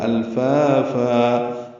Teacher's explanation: فن میں وقف کریں گے تو فا بن جائے گا ، الفافا، دو حرکات اس کو بھی لمبا کریں گے، اور